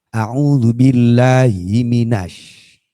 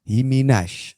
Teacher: Shin itu sifatnya tafashi. Tafashi itu nyeper. Nyeper itu ke samping. Kalau kalau kita bibir ini ke depan, maka dia akan kemasukan sifat sofir, cenderung akan menuju hurufnya makhraj shad.